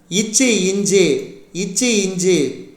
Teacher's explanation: நாவின் இடை நடு அன்னத்தின் இடைப்பகுதி பொருந்துவதால் பிறக்கும் மெய்யெழுத்துக்கள்